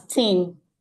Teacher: the dental fricative TH mostly produced as tin. And you know that when we mispronounce, our audience tend to misunderstand to say thin.